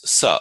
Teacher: And then there's sa, of course, which is the simple serpent sibilant hissing sound.